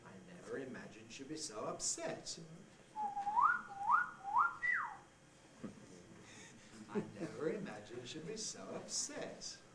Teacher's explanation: The climbing head has several little rises within it.